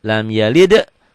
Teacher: Tapi D-nya double nih ya. Ingat-ingat D-nya double karena kol-kolah.